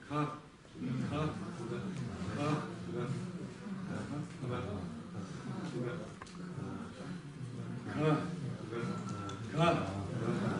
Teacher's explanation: То есть га не такая звонкая, не такая прям га в полный рост. А ближе к получается ка.